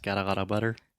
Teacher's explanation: that is the flap T. That is much more similar to a Portuguese R, right?